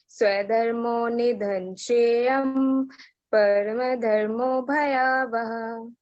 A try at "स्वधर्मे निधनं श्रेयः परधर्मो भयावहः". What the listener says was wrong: श्रेयम नहीं है बच्चे, श्रेयः है ना। स्वधर्मे निधनम श्रेयः परधर्मो भयावह। स्वधर्मे निधनं श्रेयः परधर्मो भयावह।